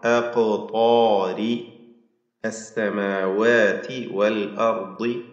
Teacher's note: ത്വാഉം അതിൻ്റെ ദീർഘാക്ഷരമായ അലിഫും തഫ്ഹീം ചെയ്യണം